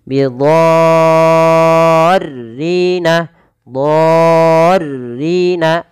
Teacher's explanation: Dha di sini wajib dipanjangkan 6 harokat teman-teman, bukan lagi 4 atau 5. Tapi 6 harokat. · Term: mad lazim